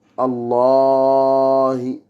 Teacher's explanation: Donc en fait, ce qui nous intéresse surtout, c'est ce qui se trouve après les deux lemmes dans la translittération de Allah. Et c'est une voyelle longue qui n'est pas en français. C'est-à-dire, il y a deux A. On doit prolonger.